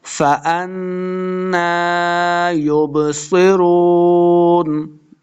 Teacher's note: نون مشدد ہے، حمزہ کو نون کے ساتھ ملا کے پڑھنا ہے، نون کے اوپر غنہ کریں گے